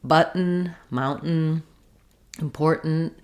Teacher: to say the syllabic N you just lift up for the n Sound and you don't really need any vowel if there's any vowel at all it's a little slight schwa · We're saying what's called a syllabic N. So the N, the N sound, is the full syllable. There's no vowel in it.